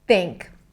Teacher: Because I blocked the air, it actually sounded more like a t sound than a thot.